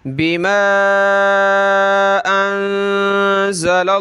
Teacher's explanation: लफ्ज़ अल्लाह को मोटा करेंगे क्योंकि लाम पे ज़बर है